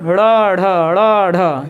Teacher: किन्हीं व्यंजन का, किसी भी व्यंजन का उच्चारण करते समय, अगर हम किसी व्यंजन का उच्चारण कर रहे हैं और उच्चारण करते समय जीभ जो है झटके से ऊपर उठे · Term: उत्क्षिप्त व्यंजन